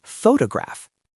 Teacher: The stress is on the first syllable. So, the O is clear. The second O becomes awah.